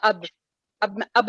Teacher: با کو روکتے نہیں ہیں ہم, وہ ہلکا سا باؤنس ہوتا ہے. وہ جتنا اردو میں باؤنس کرنا ہے اتنا ہی ہم نے عربک میں بھی باؤنس کرنا ہے. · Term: قلقلہ